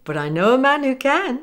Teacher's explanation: notice the linking from but to following I